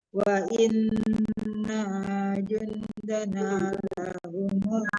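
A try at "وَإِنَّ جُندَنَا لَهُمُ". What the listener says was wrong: Tidak panjang. Inna jun tidak panjang nanya jangan ditahan ya Bu.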